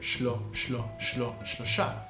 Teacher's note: It's pushing the SH and the L together.